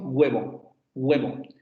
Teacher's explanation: Ese fonema es el aproximante labiovelar sonoro. Quiere decir que lo articulamos con redondeamiento de labios y la lengua echada hacia la zona del velo · Vibran las cuerdas vocales y esa forma, esa posición de la consonante se acerca mucho a una G, pero sin llegar a una G, y se acerca mucho a una U, pero sin llegar a una U. A ese sonido se le denomina aproximante.